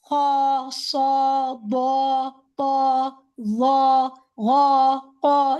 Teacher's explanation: الف جو ہے وہ ہیوی لیٹر کے ساتھ ہیوی ہی ہوگا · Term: مفخم